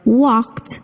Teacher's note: the Ed verb ending sounds like a t walked even though it ends in the letter d